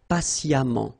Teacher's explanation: even if you write it EMMENT, phonetically it goes like amant